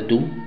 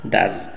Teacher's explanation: agregar el es en Do para formar das automáticamente la u el sonido de la o pasa de sonido largo u a sonido corto